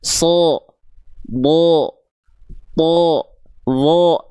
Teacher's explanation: bukan betul-betul vokal O tapi kedengarannya condong bukan ke A tapi vokal seperti O